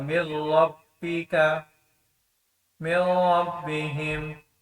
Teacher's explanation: मीम को रा के साथ मिलाएंगे, यहाँ पे इदगाम होगा लेकिन गुन्ना नहीं होगा